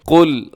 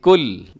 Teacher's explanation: قل میں قاف موٹا ہے، لام باریک ہے